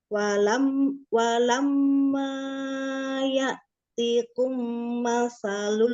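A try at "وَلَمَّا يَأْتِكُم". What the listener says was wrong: Dua harokat aja amanya.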